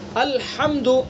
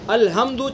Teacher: الحمد بڑی ہا ہے، اس کا مخرج ہے درمیانی حلق. ہا کو ہمیں ادا کرنا ہے، درمیان حلق سے ادا کرنا ہے الحمد.